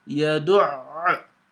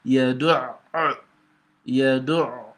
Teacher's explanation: So it's like I'm pronouncing two ayn, and so that's the meaning of shadda.